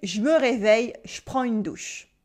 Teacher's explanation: I cut the e in je this is spoken French pronunciation we always cut the E that slows us down